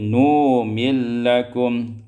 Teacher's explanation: idghamun nun fil lam, kemudian diidghamkan nun pada lam